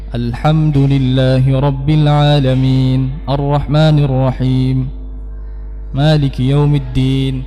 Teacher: jelas tapi tidak ee mengeluarkan tenaga yang banyak ya Jadi kita membaca dengan dengan apa namanya nada yang rendah saja